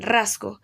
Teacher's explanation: la S en rasgo se sonoriza debido a la influencia de la G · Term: Sonorización